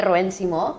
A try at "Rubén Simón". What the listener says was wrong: Hola, primero, Rubén Simón, no os olvidéis pronunciar la N, por favor.